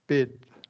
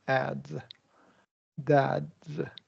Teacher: We're not releasing that D sound.